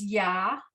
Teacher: that yud is going to sound like a Y because the ayin has no sound at all ever.